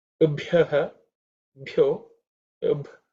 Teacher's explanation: the sound ub is the fourth letter in the per varga, so it has to be aspirated.